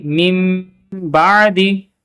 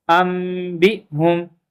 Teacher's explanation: کیونکہ آگے با حرف اقلاب میں سے جو با ہے وہ آ رہا ہے تو اس وجہ سے نون کو میم کے ساتھ بدل دیں گے